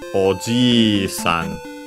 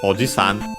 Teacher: The long vowel Oji-san. because actually if you make it short, it changes the meaning